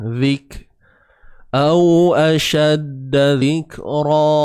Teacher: huruf kaf yang bertanda sukun, maka akan ada sifat hams yang akan hadir.